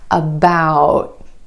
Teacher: my tongue tip goes to the ridge behind my teeth and just stays there · instead of that true T at the end most Americans are going to hold that t about my tongue tip goes to the ridge behind my teeth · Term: held T